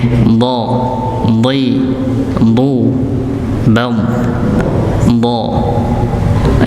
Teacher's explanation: Huruf dha itu tempatnya sisi apa namanya, tepi lidah nggih bertemu dengan geraham atas